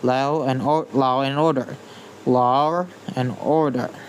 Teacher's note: intrusive R, inserting an R sound between words, even if there's no R in the spelling